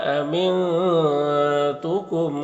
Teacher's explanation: نون کی آواز کو ناک میں چھپا کر ایک الف کی مقدار کھینچ کر پڑھیں گے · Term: اخفا